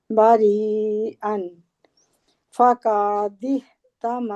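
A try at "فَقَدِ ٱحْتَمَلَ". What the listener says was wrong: नहीं, का नहीं है, का को लंबा करेंगे तो अलिफ लगा देते हैं। फका फका फका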